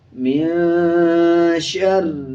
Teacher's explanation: شین کے اوپر زبر ہے، را پہ شد ہے، شد کا مطلب پچھلے الفاظ کے ساتھ ملانا ہوتا ہے، شین کو را کے ساتھ ملائیں گے اور را پہ مضبوطی کے ساتھ را کو پڑھا جائے گا۔